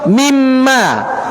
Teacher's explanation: Juga sama, idghamnya kamil, sempurna, masuk. Nunnya langsung hilang ke mim. Jadi tidak tertinggal min terlebih dahulu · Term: idgham kamil